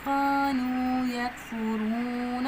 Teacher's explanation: الف مدہ ہے، ایک الف کے برابر لمبا کریں گے